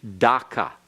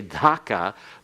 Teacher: get to the soft palate your tongue goes there and then it's supposed to be aspirated as though there are an H together with it